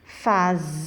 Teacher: o zen, que é mais forte. Então, não é a última, é a penúltima. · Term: paroxítona